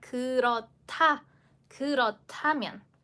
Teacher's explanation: Like I mentioned, you need to change it into the t way. So, again, just dropping the h sound because it will only need it just for combining and then make it into one aspirated consonant in pronunciation